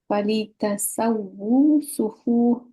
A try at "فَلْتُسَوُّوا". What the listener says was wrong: Actually, I'm pretty sure this is supposed to be Fali to Sawu, not Ta.